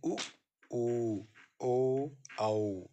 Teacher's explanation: स्वरों का जो वर्गीकरण हम ओंठों की स्थिति के आधार पर कर रहे थे उसमें दूसरा है वृतमुखी। तो इसमें ओंठ उच्चारण के समय गोल हो जाते हैं